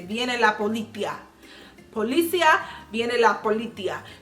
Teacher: the pronunciation in Spain with their S's is more of a TH than an S